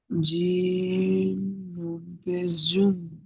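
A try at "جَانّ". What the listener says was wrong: নেই, এখানে জাবার রয়েছে। জিম দু জবর জান, আর জিম নুন জবর জান। জিমের উপর দু জবর এসেছে।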